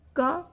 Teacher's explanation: यह कंठ से क बोला जाता है।